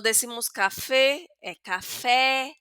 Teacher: abrimos la boca porque aquí la tilde aguda nos obliga a esto, a pronunciar la palabra de una manera abierta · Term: e abierta